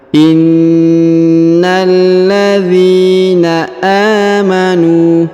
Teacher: Huruf na ditahan dan ditekan karena terdapat tanda tasdid.